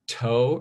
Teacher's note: after the T there's a big H if you put your hand for you know toe you feel a big puff of air